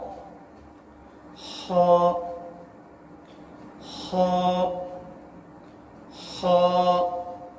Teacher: خا کی ادائیگی جو ہے وہ ادنا حلق سے ہوتی ہے